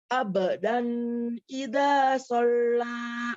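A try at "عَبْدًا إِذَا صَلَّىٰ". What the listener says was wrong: Abdan idza, dan ini tidak terlalu lama ditahannya. Abdan idza shalla.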